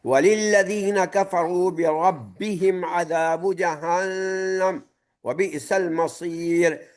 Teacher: جہنم میں نون مشدد ہے لہذا غنہ ہوگا 2 سیکنڈ کا